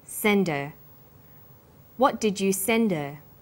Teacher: send her send is the strong form and her is weak because her is not stressed we drop the initial H sound so it's pronounced sender